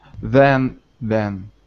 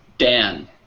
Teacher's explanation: So with then, the tongue is close to the teeth. For the D, the tongue is farther back in the mouth. So it's still on the top.